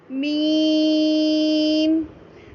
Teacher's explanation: क्या मीम का दरमियानी हिस्सा नाक में महसूस हुआ, दरमियानी हिस्से की आवाज़ नाक में महसूस हुई? तो ये हमारा मखरज नंबर 17 भी कहलाएगा, क्योंकि इसमें हमने खैशोम का इस्तेमाल किया, जो कि हमने नून में भी इस्तेमाल किया था।